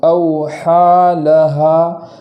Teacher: اس ہا پر کھڑا زبر ہونے کی وجہ سے ایک الف کے برابر تاخیر کریں گے